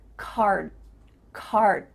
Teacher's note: D sound but your mouth is making that shape card card my tongue is flat against the roof of my mouth to make the D but it's not coming out